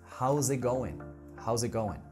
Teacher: Do you see that G there at the end of the phrase? It is completely silent. And we just reduce down the word to make it sound smoother and faster.